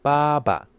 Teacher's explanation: That first ba is first tone, but that second one that's the fifth tone.